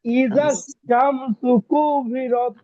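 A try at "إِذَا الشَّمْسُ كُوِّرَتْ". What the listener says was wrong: ভাই শিনটাকে একটু মোটা করেন। ইদা শামসু, শামসু পাতলা, ইদা শামসু কুবিরাত।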